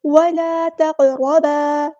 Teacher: ولا تقربا، قاف پورا ادا کریں گے، تا باریک لائٹ لیٹر ہے، قاف پورا ادا ہوگا، ہیوی لیٹر ہے، را پور یہاں پہ ادا کرنا ہے، ہیوی لیٹر ہے، الف مد آ گیا تو الف کے برابر لمبا کریں گے اور قاف پہ قلقلہ ہوگا۔